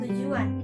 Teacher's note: Labialisasi, yaitu bunyi sertaan yang dihasilkan ketika bunyi utama diucapkan sehingga terdengar bunyi sertaan W pada bunyi utama. Misalnya, bunyi T pada kata tujuan terdengar seperti tu sehingga lafalannya tujuan.